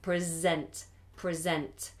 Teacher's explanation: if you use the word present as a verb to give something to present then you say Z